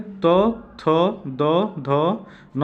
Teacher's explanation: इन्हें दंत वर्ण कहा जाता है इनका, क्योंकि इनके दांत से उच्चारण किया जाता है, ऊपरी दांतों के निकट से इनका उच्चारण किया जाता है